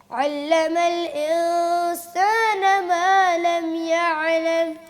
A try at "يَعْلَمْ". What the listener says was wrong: اب یہ عین ہلکی سی ہل رہی ہے، اس کو ذرا صحیح طرح پکڑیں.